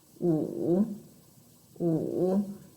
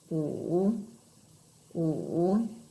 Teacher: So, my tip for you to pronounce tone number 3, our third tone, you should start very, very low